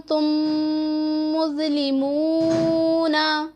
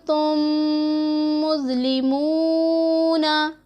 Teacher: और जो गुन्ना है उसकी मिक़दार 1-2 सेकंड की होगी